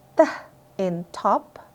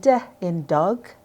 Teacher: For example, when you say t in top and d in dog, your tongue touches the same spot, but one sound is voiceless and the other is voiced